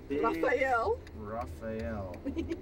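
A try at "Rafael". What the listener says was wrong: You gotta roll the R.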